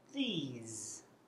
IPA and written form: ðiːz (these)